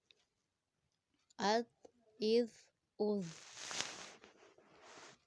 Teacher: زوا کو ہم موٹا ریڈ کریں گے کیونکہ حرف مستعلیہ میں سے ہے